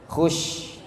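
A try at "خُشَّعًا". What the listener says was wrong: Kepanjangan Ibu sedikit aja. Khusya'a. Khusya'a.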